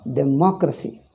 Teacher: We Indians pronounce, but the stress changes. Democracy, in that democracy, the stress is on ma.